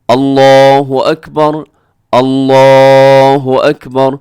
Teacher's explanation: جب یہ قرآن پاک کے علاوہ آپ اس کی ادائیگی کریں لفظ اللہ کی، تو آپ نے لفظ اللہ کو پر پڑھنا ہے، موٹا کر کے پڑھنا ہے